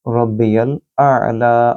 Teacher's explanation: आइन को गले से बोलिए और लाम को लंबा करें क्योंकि यहाँ खड़ी ज़बर